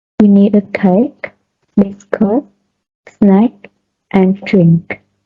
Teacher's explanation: item listed in an utterance have a rising tone, except the last one which has the falling tone